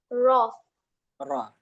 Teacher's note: र जबान के किनारे को सामने के चार दांतों के मसूड़ों से टच होने से र अदा होता है। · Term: र का मखरज